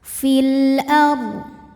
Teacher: Karena alif lam menghadapi huruf qamariah yaitu hamzah. Maka lam sukun dibunyikan dengan jelas. Fil ard. Ro sukun dibunyikan secara tafkhim sebab huruf sebelumnya berbaris fathah maka dibacanya tebal. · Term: alif lam qamariah